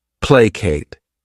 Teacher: This word has 2 syllables, and the stress is on that first syllable